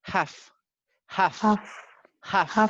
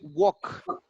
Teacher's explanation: Never L. We don't pronounce the letter L. So it's half.